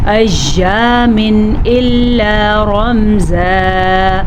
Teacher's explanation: نون ساکن یا تنوین کو ظاہر کر کے پڑھتے ہیں، بغیر غننے کے پڑھتے ہیں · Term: اظہار کا قاعدہ